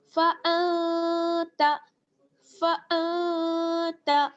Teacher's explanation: یہاں پر بھی آپ دیکھ رہے ہیں نون ساکن ہے اور نون ساکن کے بعد تا ہے، تا جو ہے وہ حروف اخفا میں سے ہے تو یہاں پر اخفا ہوگا